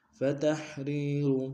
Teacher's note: را کو یا کے سامنے مد اعتدال میں کھینچیں گے. فتحریر رقبۃ مؤمنہ، را موٹا ادا کریں گے، قاف موٹا ادا کریں گے تاکہ تنوین کو میم کے سامنے لیں گے، میم کو حمزہ کے سامنے لیں گے، جھٹکا دیں گے.